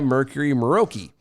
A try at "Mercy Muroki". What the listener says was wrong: Mercy. Mercy. No, you said Mercury.